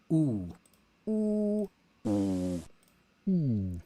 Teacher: this is a steady state solid like single vowel